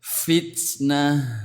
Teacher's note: Baik, hal yang perlu diperhatikan pada huruf ta ini adalah menjaga kesempurnaan sifat sidah atau tertahannya suara saat sukun · Jadi saat huruf ta ini bersukun ini harus keluar hamisnya karena ini sifat lazimah, sifat yang menempel, yang mengikuti sampai kapanpun ya.